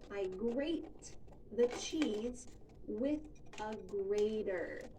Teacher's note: Notice that the T in grater sounds like a D in American English. This is very common that the T between vowel sounds will sound like a D.